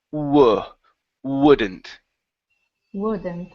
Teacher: you start off with the W ooh but then you have to go to an oh